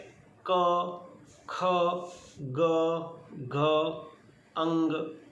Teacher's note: कौन से वर्ण कहाँ से उच्चारण होते हैं, तो उच्चारण स्थान मैंने लिखा है कंठ्य, तालव्य, मूर्धन्य, दंत्य, ओष्ठ्य। क, ख, ग, घ और अंग यह कंठ से निकलता है।